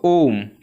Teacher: ऐसे कुछ शब्द होते हैं जिनको बोलने में 3 मात्रा के बराबर का समय लगता है। तो 3 मात्रा के बराबर का समय क्या होता है, जैसे हम बोलते हैं दोस्तों ओम। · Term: प्लुत स्वर